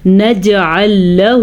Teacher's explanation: نجعل له جیم کے اوپر قلقلہ ہو رہا ہے